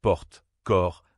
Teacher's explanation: Eu ouvert comme dans porte corps. C'est un son plus ouvert. La bouche s'ouvre davantage